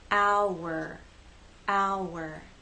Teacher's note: the sounds connect with the help of the W sound